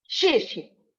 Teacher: That's an abrupt falling tone.